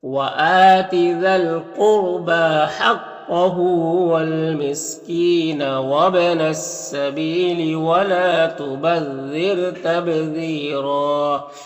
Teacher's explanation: را ساکن سے پہلے ذال کے نیچے زیر ہے تو را کو باریک پڑھیں گے